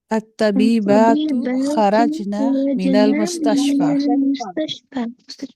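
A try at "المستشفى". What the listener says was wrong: हाँ जी, इसको मुस्तशफी नहीं पढ़ना आपने, इसको क्या पढ़ेंगे हम? हाँ, ये या नहीं है, ये अलिफ है, ये या नहीं है। अगर ये या होती तो दोनों नीचे दो नुक्ते होते, अगर या अलिफ मकसूरा, ये या अगर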